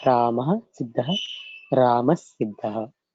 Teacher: So then Sa will come as Adesha in the place of Visarga. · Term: Visargasya Sa